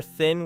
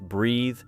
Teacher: notice that the tongue position is similar while the vibration changes